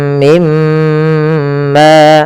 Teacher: mim mati ketemu mim, idgham mimi, cara membacanya masukkan mim pertama kedua dan ditahan